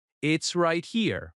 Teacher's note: Notice how it is becomes its.